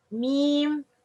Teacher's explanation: When pronouncing the meme, part of the sound comes from the mouth, while the other part comes from the nose. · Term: غنة